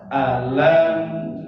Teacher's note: Alam ada mim sukun ketemu dengan nun, hukumnya izhar syafawi. Izhar artinya jelas, syafawi di bibir. Jadi jelas di bibir. Jangan ada dengung di saat membunyikannya.